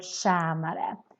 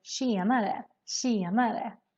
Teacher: But this one, especially in Stockholm, we changed the ä sound more to an e sound. So that's why this sounds more like tjenare, tjenare.